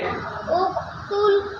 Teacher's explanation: زور سے اقتل قاف کو قلقلہ کریں